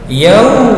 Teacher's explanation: Wabil, alif lam dibaca jelas disebut qamariyah. Yau, fathah bertemu dengan waw, maka bacaannya menjadi lentur menjadi huruf u, maka disebut mad layin, panjangnya 2 harokat.